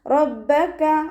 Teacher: റോ ഫതഹയാണ്, ഉയർത്തിയിട്ട് ഉച്ചരിക്കുക.